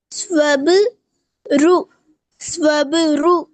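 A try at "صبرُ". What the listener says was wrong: ரு ரு ரு என்று தான் வருது. அது மாறணும். நல்லாவே மாறணும் அது. ரு அல்ல, அந்த சவுண்ட் தேவையில்ல. ரு ரு ரு ரு என்ன அந்த ரூட உச்சரிப்பு வந்தா சரி.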